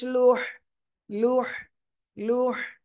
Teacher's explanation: লাম হা গলাটা চেপে বলতে হবে